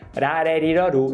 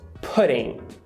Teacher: como ela está falando muito rápido, esse D, ele bate tão rápido nos alvéolos que ele vira o flap